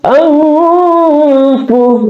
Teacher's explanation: Kemudian ada alif aqsal halki, nun sukun bertemu dengan fa sebagai syafatain ya, keluar bibir kita. Di sini hukum tajwid adalah ikhfa hakiki, yaitu dibaca dengan 2 sampai 3 harakat. Contoh, dengan seperti keluar huruf NG.